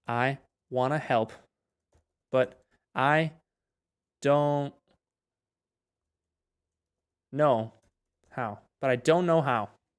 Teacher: Pero entendé que cuando nosotros decimos I don't know, esto se combina, ¿verdad? Esto suena como si fuera una sílaba, una sola sílaba.